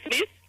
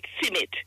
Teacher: That is why it's like Smith, we call Smith Simit. We put in a vowel in between the S and the M.